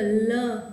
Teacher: જો લ છે લ એ લનું ઉચ્ચારણ આપણે કરીએ ને ત્યારે જો લ ત્યારે હવા છે એ બે બાજુથી પસાર થાય છે તો લ છે એ આવો પાર્શ્વિક ધ્વનિ છે